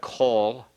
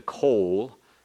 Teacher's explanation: It's pronounced kol. It's not as long as the coal